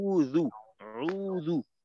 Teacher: দেখেন আউযু বিল্লাহর ভিতরে শুধুমাত্র উ এবং জু, উযু উযু, এইখানে আমাদের ঠোঁটটা গোল করার প্রয়োজন, আর কোথাও কিন্তু ঠোঁট গোল করার কোনো সুযোগ নেই, ঠোঁট গোল হবে না।